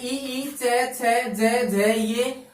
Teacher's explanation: जिन वर्णों का उच्चारण करते समय समास वायु तालु को स्पर्श करके मुख से बाहर निकलती है तो उन्हें तालव्य वर्ण कहते हैं